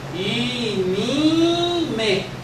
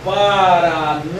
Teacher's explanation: Quando é nasal, P depois de nasal, ele se nasaliza em me